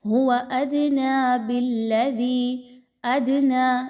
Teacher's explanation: دال پر جزم کی علامت ہے، دال کو ہلا کر پڑھیں گے